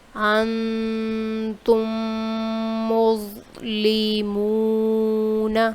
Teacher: میم ساکن کے بعد دوسری میم تھی، یہاں پہ ہم اس وجہ سے ہم نے یہاں پہ غنہ کیا ہے